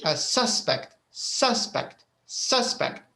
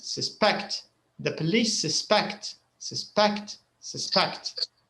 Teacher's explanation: When you use a noun, when you say it as a noun, the first syllable is stressed.